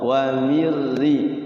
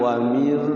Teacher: Jadi idgham bila guna itu loncat langsung ke ra.